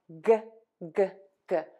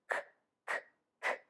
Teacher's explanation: Tip of the tongue is going to be down. Back of the tongue is going to be pulled high up.